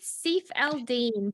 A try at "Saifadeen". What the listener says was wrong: It's Saifadeen. L silent.